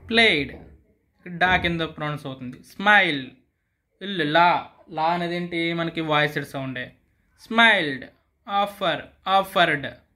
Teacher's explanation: present tense ends with voiced sounds the past marker D is pronounced d sound